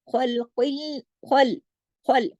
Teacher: خا موٹا، لام باریک جماؤ کے ساتھ